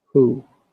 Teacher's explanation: when you pronounce who, pronounce it from the back of your throat, like who. Yeah, who.